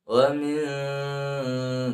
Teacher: nah sudah kena hidung, wa min, dan mendengung